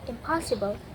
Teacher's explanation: Example, in plus possible becomes impossible because N changes to M before the bilabial P. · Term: regressive assimilation